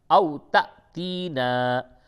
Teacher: جھٹکا اس جگہ پہ ہوگا حمزہ کے اوپر، یعنی الف کے اوپر جب یہ جزم آوے تو وہ حمزہ ہوتا ہے.